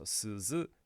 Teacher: the vowel is completely unaffected by whether there is ten-ten or not all that we're doing is voicing the consonant in there